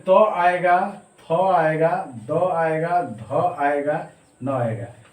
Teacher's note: त्वर्ग में त आएगा, थ आएगा, द आएगा, ध आएगा, न आएगा, और इसका उच्चारण स्थान जो है दंत हो जाता है